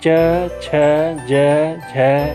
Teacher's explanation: च छ ज झ य य और तालव्य स का उच्चारण स्थान तालु है। इन्हें तालव्य वर्ण भी कहते हैं।